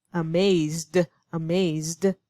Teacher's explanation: But when I use this one, amazed, amazed, you feel the vibration of the vocal cords at the end, making that D sound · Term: Voiced